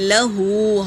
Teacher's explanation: ہا کے اوپر کھڑا پیش ہے تو ایک الف کی مقدار کھینچیں گے